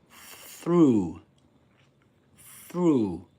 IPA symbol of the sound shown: θ